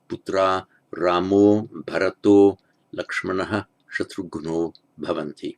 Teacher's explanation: by Sandhi, the final A becomes O because of the following voiced consonant